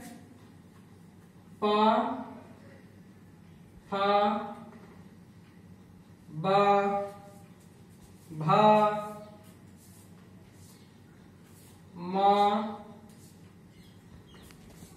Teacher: इसमें दोनों ओष्ठ मिल जाते हैं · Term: ओष्ठ वर्ण